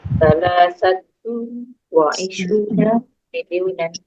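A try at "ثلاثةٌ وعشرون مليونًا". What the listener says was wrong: Iya, salah satun wa isruna miliunan. Salah satun bertanwin wa isruna miliunan.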